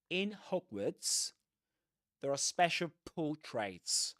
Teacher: Portraits with that long O sound at the beginning. Portraits without pronouncing the R